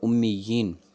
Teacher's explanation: اکٹھا کر کے ایک بنا کے پڑھا، تو اب ہم نے ایک یا جو ہے وہ بطور تمکین کے تشدید کے ہم نے اسے کھینچ کے پڑھی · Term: مد تمکین